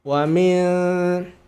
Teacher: cara menyamarkan Nun ujung lidah kita posisi Diam di tempat jangan naik ke atas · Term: Nun disamarkan